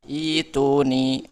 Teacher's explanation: Ketika mulai nomor 9, ketika mulai bacaan dari kata ituni, maka hamzahnya dibaca kasroh, dipanjangkan 2 harokat.